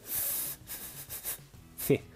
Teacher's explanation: Pour faire le son C, je pince le bout de la langue très légèrement entre les dents de devant et je souffle. C'est un petit peu comme si j'avais un feu sur la langue.